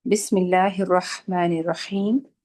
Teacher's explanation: سین کے اوپر تھوڑی سی جو ہے صفیر کی آواز ہونی چاہیے، باقی کسرہ لائٹ ہونی چاہیے۔